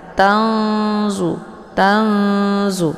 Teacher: terlalu jauh maka ini dinamakan dengan Ikhfa ausad jadi cara bacanya itu nunnya disamarkan kemudian siap-siap masuk ke huruf d · tingkat kesamaran dengan dengungannya itu seimbang atau setara ya tidak lebih keedengung juga tidak lebih ke samar